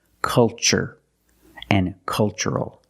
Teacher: the first syllable is a short U, like cup and up. Make a relaxed sound.